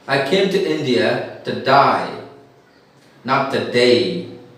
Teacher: Because Australians don't have A, they have the sound I. A is replaced by I.